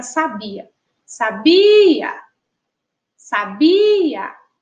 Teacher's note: a gente já identifica aí que a sílaba tônica é a sílaba ba